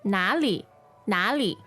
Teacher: So this is NA third tone, LI neutral tone.